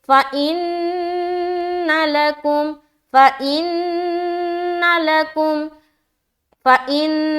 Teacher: फ़इन, नून मुशद्दद का गुन्ना, उसके बाद नून को ज़बर की हरकत के साथ पढ़ रहे जल्द, लकुम, लाम ज़बर ला, काफ मीम पेश कुम, लकुम।